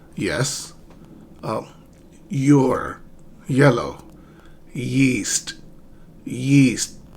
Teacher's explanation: So raise your tongue near the hard palate without touching it. Okay, and then you let voice out.